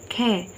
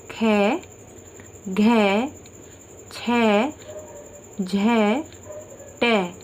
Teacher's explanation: जब आप ख बोलेंगे तो आप देखेंगे कि आपके मुंह से अधिक वायु बाहर निकलेगी। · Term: महाप्राण